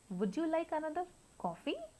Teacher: first the pitch of the voice will fall and then again it will rise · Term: fall rise intonation